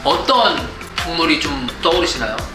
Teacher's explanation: And this is pretty standard intonation. It goes up on the first syllable in a word and down again on the last syllable, and then slightly upward on a question.